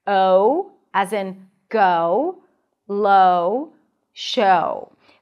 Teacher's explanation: the O as in go starts with a back open ah sound, and then you round your lips for an oo sound. Technically, it's more of a lax oo, O, but if you think of it as a W sound at the end, it makes things a whole lot easier. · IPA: /oʊ/